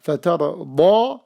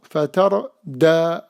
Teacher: the letter dad, if we don't elevate it, it becomes letter dal.